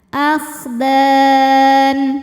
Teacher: Jika berhenti huruf dal ini dipanjangkan boleh 2, boleh 4, boleh 6 harokat asal konsisten dalam sekali bacaan. Akhdan, di atasnya ada tanda waqaf namanya waqaf al-waqfu aula yang artinya berhenti lebih utama. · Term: mad arid li sukun